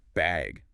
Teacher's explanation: do you need a bag or even just bag with a rising tone?